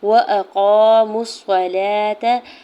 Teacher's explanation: الف سے پہلے قاف کے اوپر زبر ہے، قاف حرف مستعلیہ میں سے ہے، پر پڑھیں گے